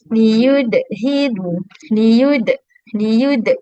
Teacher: Okey, kesalahan komen kita yang mungkin kita tak perasan pun itu adalah satu kesalahan ialah bila kita bunyikan huruf qalqalah, bila kita lantunkan suara bagi huruf-huruf qalqalah seperti huruf dal, kita tambah bunyi hamzah · E belakang tu itu bunyi Hamzah.